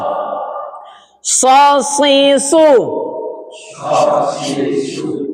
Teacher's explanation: Sela-sela antara gigi suaranya keluar dari udara yang tertekan. Dia punya sifat yang sama, sifat khusus yang disebut dengan sofir